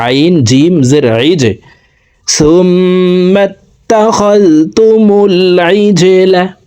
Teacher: জিম কলকলার হরফ নিচের দিকে ধাবিত করে ধাক্কা দিয়ে উচ্চারণ করতে হবে